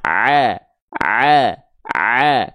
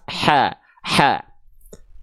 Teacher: tapi kalau Ain dia enggak pakai nafas